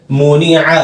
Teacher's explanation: حلق سے نکالنا عین کو اچھے سے